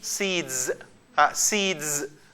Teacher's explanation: why did we pronounce it z sound voiced after voiced